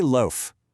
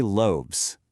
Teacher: Say loaf. Your throat doesn't vibrate on that F. Now say loes.